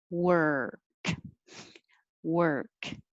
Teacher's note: lips round but not too much and it's the same sound as just making an r noise so your tongue is curled back er like you're saying her but with a w